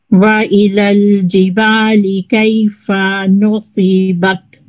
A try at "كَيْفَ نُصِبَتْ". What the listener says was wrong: ये फा को भी ज्यादा लंबा नहीं करेंगे. कैफा नुसीबत